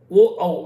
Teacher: ఓ ఔ అనేటువంటి అక్షరాలు కంఠము పెదవులు కలిస్తే వస్తాయి